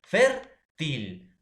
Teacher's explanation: lleva la mayor fuerza de voz en la penúltima sílaba.